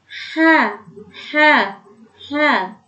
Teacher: Kalau H itu makhrajnya adalah di tenggorokan bagian tengah, maka dia harus mulus, halus, dan sifatnya adalah hamas mengalir. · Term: huruf H